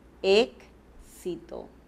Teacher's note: la palabra éxito escribimos un grafema una letra pero qué pronunciamos decimos exito verdad estamos pronunciando a la vez dos consonantes